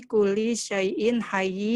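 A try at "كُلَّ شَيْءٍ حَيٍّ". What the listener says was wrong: Kulla. Ya, bukan kuli. Karena dia tasdidnya tuh di atas. Barisnya di atas. Kulla syai'in hayyin.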